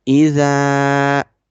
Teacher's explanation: There is zal sound after fatha, alif is coming. We will make this z sound longer. إذا, and after fatha, alif is coming, and there is big mud sign on it.